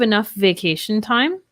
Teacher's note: so the f and the v kind of blend together we link them